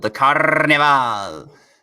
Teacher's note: I always imagine the R in there is super trilled